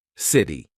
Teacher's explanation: This is when T sounds like a very quick D. Very big in American pronunciation. So when the letter T is in between two vowel sounds or diphthongs, all right, we're going to use that quick D. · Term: flap T